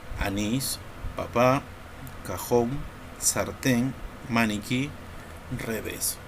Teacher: Lo separamos en sílabas, vemos que la mayor fuerza de voz recae en la última sílaba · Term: palabra aguda